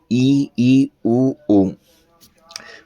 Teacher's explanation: संवृत स्वर इसके उच्चारण में कम मुख खुलता है।